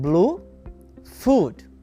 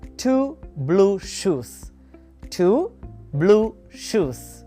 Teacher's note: It's the long version of the sound oo. Your lips will be in a rounded position.